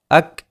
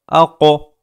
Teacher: काफ के अंदर कलकला नहीं होता है और क़ाफ के अंदर कलकला होता है, आवाज़ लौट कर आती है। इसमें एक तरीक़े का इको होता है।